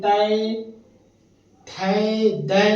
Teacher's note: त वर्ग जब हम त वर्ग की ध्वनि करते हैं उच्चारण करते हैं तो उसका दंत से जाकर टकराता है